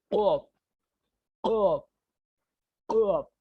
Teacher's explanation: कॉफ जब आप बोल रहे हैं आप, तो आप जो अंदर जो तारक है, छोटी जो जुबान है, उसको आपको वाइब्रेट करना पड़ेगा। ये पूरा हलक को आप वाइब्रेट करना पड़ेगा आपको, इसकी वजह से कॉफ निकलेगा।